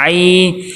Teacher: یائے لین کو نرمی سے پڑھیں گے، معروف پڑھنا ہے، مجہول نہیں پڑھنا